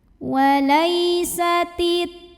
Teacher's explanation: Bismillahirrahmanirrahim. Walai, lai ada huruf lin, sebab ada ya sukun yang didahului baris fathah. Cara bacanya cukup dilembutkan.